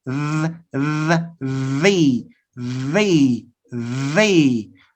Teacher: tip of my tongue between the teeth and you have to vibrate here your vocal chords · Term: dental sounds